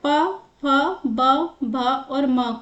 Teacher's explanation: ओष्ठ। जब प बोलते हैं तो दोनों जो ओष्ठ है वो आपस में टच होते हैं